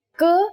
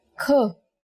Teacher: k is a consonant, and when we say it with aspiration, it becomes another consonant kh